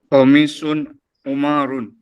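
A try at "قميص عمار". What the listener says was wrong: Ammar. Hati-hati bedakan antara Ammar dengan Umar ya. Nah, Ammar dengan Umar beda. Kalau ada alifnya itu Ammar. Ammar ada huruf alif di sana. Kalau Umar tidak ada. Ain, mim, ro langsung 3 huruf. Ain, mim, ro itu Umar.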